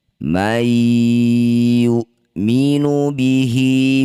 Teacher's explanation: Nun sukun bertemu ya disebut bacaan namanya idgham bigunnah. Bunyi nun masukkan pada huruf ya, dengungkan dua harakat.